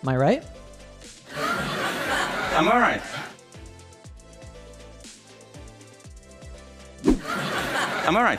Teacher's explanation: speaks quickly, and the A in am is almost silent.